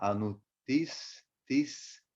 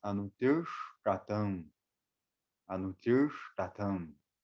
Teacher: Esse pontinho embaixo do S e do T, o som ele vai ficar retroflexo. A gente, em vez de falar anutis, tis, com S batendo aqui, tis, tis no céu da boca, próximo do dente, fica anutir.